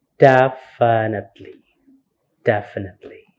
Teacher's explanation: so the stress here is in the first syllable